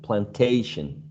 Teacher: so we're stressing the second the second syllable